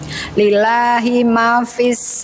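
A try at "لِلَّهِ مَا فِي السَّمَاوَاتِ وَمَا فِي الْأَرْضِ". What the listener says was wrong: Ma-nya panjang. Panjang pendek.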